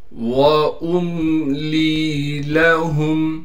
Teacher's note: حمزہ کو میم سے ملائیں گے اس لیے کہ میم ساکن ہے، بغیر غنہ کے ملانا ہے، یعنی ناک میں آواز کو نہیں لے کر جانی۔ لام کو یا سے ملائیں گے اس لیے کہ یا ساکن ہے اور لام کو ایک الف کی مقدار کھینچیں گے اس لیے کہ جو حرف لام کے بعد آیا ہے وہ حروف مدہ میں سے یا ہے۔